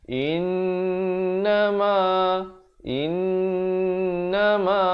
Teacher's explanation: Yang betulnya ialah innama, innama. In itu didengungkan 2 harakat, ma juga 2 harakat.